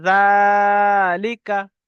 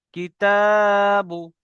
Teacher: জালের উপরে খাড়া জবর এসছে, বলেন জালের উপরে খাড়া জবর এসছে, খাড়া জবর আলিফ মাদ্দার সমতুল্য, তাই একে এক আলিফ পরিমাণ টান দিয়ে পড়তে হবে। লামের নিচে যে এসছে জেরটি হলো হারাকাত, হারাকাতকে তাড়াতাড়ি পড়া, মোটেও না টানা।